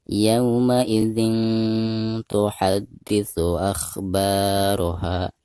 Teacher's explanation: Karena bacaan di sini dihukumi ikhfa ya. Jadi suara tanwinnya itu harus didengungkan ya, atau disamarkan disertai dengan dengung. · Akhba di sini dipanjangkan 2 harokat karena ada harokat fathah ba lalu berhadapan dengan alif sukun. Akhbaraha, ini juga sama, mad tabi'i atau mad asli, dibacanya 2 harokat.